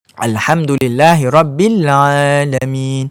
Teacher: huruf Ain ni dia hanya duduk pada pertengahan kerongkong sahaja